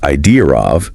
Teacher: If idea of sounds a bit like idea of, that's probably that intrusive R sound sneaking in there.